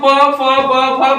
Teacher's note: जब भी हम प का उच्चारण करेंगे दोनों ओष्ठ आपस में टकराएंगे तभी हम प फ ब फ बोल सकते हैं।